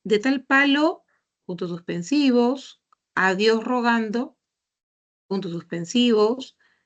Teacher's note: al ser las oraciones incompletas se ha omitido ese tono final